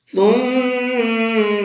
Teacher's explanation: ثم میم کے اوپر تشدید ہے تو یہاں پر غنہ کر کے پڑھیں گے۔